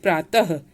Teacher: विसर्ग का उच्चारण ह के समान होता है